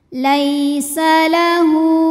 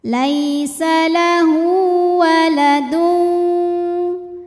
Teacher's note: laisa lahu, hu mad silah qasirah. Karena ha dhamir diapit dua huruf hidup, huruf setelahnya selain hamzah, maka ha dhamirnya panjang dua harokat. Laisa lahu waladun.